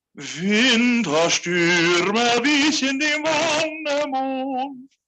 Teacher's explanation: Yeah, dem. I want you to lean and I want you to give a nice little stress on Stürme.